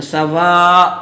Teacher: جب اس پہ ہم ٹھہریں گے سواءن پہ تو یہاں پر اس کو ایک الف بنا دیں گے. ایسے ٹھہریں گے سواء.